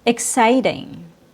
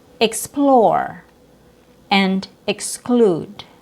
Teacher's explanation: E X is pronounced with a short I sound plus K S like in the word exciting.